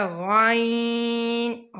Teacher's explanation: آگے ہے غائن، غائن کو بھی موٹا کر کے پڑھیں گے۔ غائن کا وہ مخرج ہے جو خا کا ہے، یعنی حلق کے شروع سے جو منہ کی طرف ہے